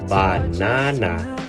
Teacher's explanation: Equal stress in Filipino English versus banana, second syllable stress in American English